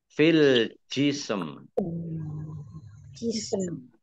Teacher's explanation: Nah ini sin sukun juga mim sukun karena wakof. Maka ada 2 huruf yang berharokat sukun, maka dibaca setengah-setengah.